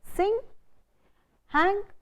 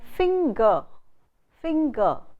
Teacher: There are two sounds n and g in a consonant cluster. We don't, and that's very different from the sound ng, ng.